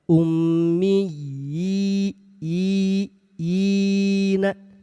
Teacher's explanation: huruf ya bertasydid dan berharakat kasrah berdiri bertemu dengan huruf ya sukun. Hukum ini disebut dengan mad tamkin panjang dua harakat.